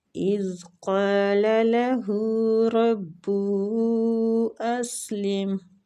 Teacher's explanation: رب ہو راز فتح کی وجہ سے پور پڑھیں گے، اور ہو پہ جو مد ہے یہ مد جائز منفصل ہو رہی ہے، اس کی کھینچنے کی مقدار 3 حرکات ہے